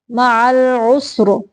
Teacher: ساکن کرتے ہوئے را کی موٹی آواز نکالیں گے